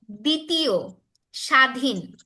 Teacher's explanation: মানে ব ফলাটা উচ্চারিত হয় না